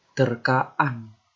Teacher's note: Kalau bentuk dasar berakhir dengan vokal A, ini dia. Terjadi penambahan glotal, bunyi glotal.